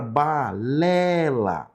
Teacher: A palavra açúcar, nós temos a sílaba tônica no sul, não é verdade? E a palavra balela, nós temos a sílaba tônica na sílaba lé